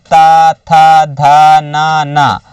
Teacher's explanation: दंत ध्वनि के अंतर्गत आते ता तो दांतों की मेल से बनते हैं